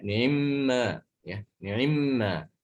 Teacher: Kasroh ain itu dibaca dengan ikhtilas namanya ya. Dibaca dengan cepat dengan suara yang rendah dibandingkan dengan sebelum dan setelahnya.